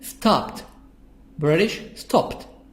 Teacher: I read it T sound because I have P at the end.